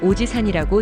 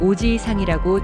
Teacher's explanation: 이 단어는 오지이상이라고 지 뒤에 이를 길게 늘려서 발음합니다. 이때 지이는 두 박자처럼 발음되어야 합니다. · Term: 장음